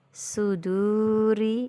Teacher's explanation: wau sukun sebelumnya ada huruf yang bertanda baca damah ini juga Mad thi'i yang panjang dua harakat